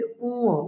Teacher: এটি হল নাসিক্য বর্ণ। নাক দিয়ে উচ্চারণ করতে হবে